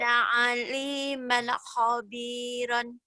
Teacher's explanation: Jawabannya kelihatan kobiron. Ini bukan ko tapi kho ya. Orang Jawa kho jadi ko.